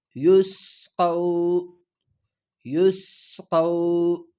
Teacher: اگلا لفظ یا سین پیش یس، یا سین پیش یس، قاف واو زبر قو۔ یہاں سین میں سٹی کی آواز کو پیدا کر کے ادا ہو جاتا ہے۔ یا سین پیش یس، قاف واو زبر قو، یسقو، یسقو۔